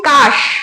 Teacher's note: এবার দেখো, এখানে আমি উচ্চারণ করছি কাশ। যখন আমি কাশ উচ্চারণ করছি স্বরের সঙ্গে কিন্তু আমার কোনো অ আ ই উ আসছে না, অর্থাৎ কোনো স্বরধ্বনি আমরা উচ্চারণে পাচ্ছি না। সুতরাং আমরা কিন্তু এই কাশটাকে বলবো হচ্ছে রুদ্ধ দল।